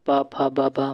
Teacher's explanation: ये जो पावर्ग है, पावर का उच्चारण स्थल ओष्ठ होता है, क्योंकि जब भी आप पा फा बा बा बोलते हैं तो आपके होंठ आपस में टच होते हैं